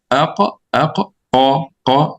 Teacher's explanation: They are pronounced from the same point of the tongue. One with the soft palate, you get the Qaf